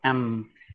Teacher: we are closing the mouth and the air is coming out of the nose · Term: nasal